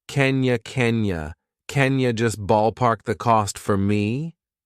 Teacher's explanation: Can in this sentence is an auxiliary verb, so we pronounce it unstressed, and it sounds like kin. Kin you, kin you, and you can make that unstressed too and reduce it to ya.